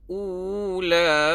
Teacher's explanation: U 2 harakat, lepas tu lam 2 harakat. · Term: waw mat